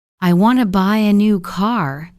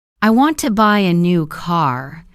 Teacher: The stressed words are want, buy, new car. The others two and a are soft and quick. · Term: content words